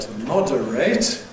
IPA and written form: ˈmɒdəreɪt (moderate)